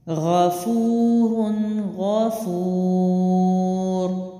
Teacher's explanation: اگلا لفظ ہے غفور، غائن جو ہے موٹا ہے، پڑی حرکت ہے، غائن زبر غا، پڑی حرکت لمبی نہیں کرتے، جھٹکا نہیں دیتے، مجہول نہیں پڑھتے۔